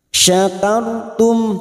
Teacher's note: fathah kita baca tafkim syakartum mim sukun bertemu W Har syafawi mim sukun dibaca jelas tanpa mendengung · ro sukun yang sebelumnya fathah kita baca tafkim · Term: idhar safawi